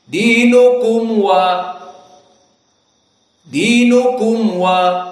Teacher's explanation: mim Sakinah bertemu dengan dal dan mim Sakinah bertemu dengan wau di sini hukumnya adalah Idhar asyafawi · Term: Idhar syafawi